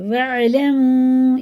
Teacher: یہ واو ساکن سے پہلے پیش ہے، الٹے پیش کی طرح اسے کھینچ کے پڑھنا، اور یہ مد منفصل ہے 1 الف کے برابر، اسے بھی کھینچ کے پڑھنا ہوتا ہے۔